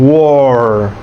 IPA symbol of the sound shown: ɔ